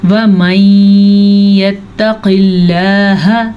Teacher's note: یہاں پہ ادغام بالکل ہو رہا ہے کیونکہ نون ساکن کے بعد یمون میں سے یا آیا ہوا ہے. البتہ قاف کو ہم موٹا کریں گے کیونکہ قاف حروف مستعلیہ میں سے ہے، لیکن لفظ اللہ کو ہم باریک پڑھیں گے کیونکہ لفظ اللہ سے پیچھے زیر ہے.